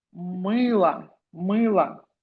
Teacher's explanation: I is stressed. That is why O will be pronounced as A.